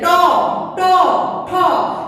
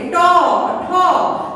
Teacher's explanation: দেখো যে দাঁতের গোড়া, দাঁতের যে গোড়া, সেই গোড়ার সঙ্গে স্পর্শ হচ্ছে জিহ্বার ডগা, কিন্তু জিহ্বার ডগাটা একটু উল্টো করা হচ্ছে